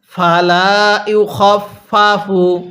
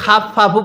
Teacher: খ জবর খা পড়ব না, খ জবর খ পড়ব